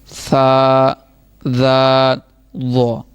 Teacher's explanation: ऊपर वाले दांतों के दरमियान में हमारी ज़ुबान टच करेगी तो फिर ये सही अदा होगा।